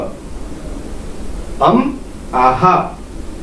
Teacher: आहा असं म्हणताना आपण श्वास सोडतोय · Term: विसर्ग